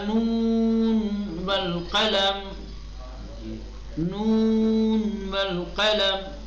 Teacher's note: ادغام نہیں کریں گے کہ آپ سین کے نون کو جو ہے واو میں ملا دیں بلکہ نون کا اظہار کریں